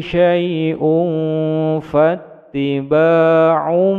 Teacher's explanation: tanwin bertemu dengan fa, bacaan ihfa, mendengung samar menuju pada huruf fa, panjang dua ketukan.